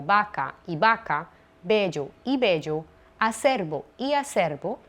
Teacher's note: Las dos representan hoy el fonema bilabial sonoro B. Por tanto, no es propio de nuestra lengua articular la B como labio dental, es decir, apoyando los dientes superiores en el labio inferior, como ocurre en otros idiomas.